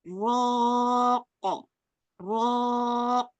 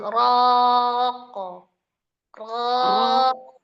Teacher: jadi jangan ada hamzah sukun di belakang qalqalah ya